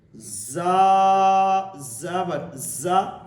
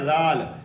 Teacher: سیٹی والے حروف کو حروف صفیریہ کہتے ہیں، تو زا حروف صفیریہ میں سے ہے۔ جب ہم زا کو سیٹی کے ساتھ پڑھیں گے اور باریک پڑھیں گے، ذال کو بغیر سیٹی سے پڑھیں گے تو دونوں میں فرق ہو جائے گا۔